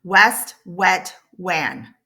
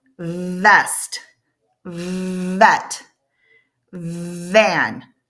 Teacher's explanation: my lip is not touching my teeth when I make the W sound, but it is when I make that V sound